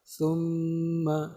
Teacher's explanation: یہاں نون اور میم پر تشدید لگی ہوئی ہے، لہذا اس کو غنہ کر کے پڑھیں گے۔